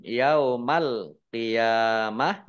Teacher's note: mim sukun bertemu dengan huruf ya bacaan izhar syafawi dibaca jelas alqiyamah alif lam qamariyah ditandai lamnya dibaca sukun kemudian ya fathah